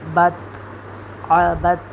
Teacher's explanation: با کو ہم ڈائریکٹلی تا سے ملا دیں گے